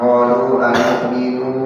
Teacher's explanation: nunya enggak panjang karena enggak ada waw bukannya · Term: Pendek